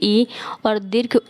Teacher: जिन स्वरों के उच्चारण में जो हमारा मुख है वो कम खुलता है उन्हें हम संवृत स्वर कहते हैं। जैसे आप दीर्घ ई और दीर्घ उ का उच्चारण करते हैं तो उस समय जो हमारा मुख है वो कम खुला हुआ होता है, तो इसलिए हम इसे संवृत स्वर कहते हैं।